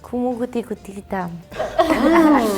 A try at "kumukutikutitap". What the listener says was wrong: T at the end, so it's.